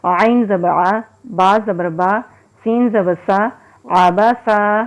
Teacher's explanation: سین سیٹی والا حروف ہے، اس میں سیٹی کی ہلکی سی آواز آتی ہے، اور عین حروف ہلکی ہے، حلق سے نکالیں گے۔